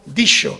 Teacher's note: un sonido palatal, digamos fricativo palatal, para que nos entendamos exactamente el fricativo palatal sordo